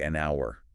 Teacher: But when we say it, the H is silent. The first sound we actually hear is a vowel sound, like an out.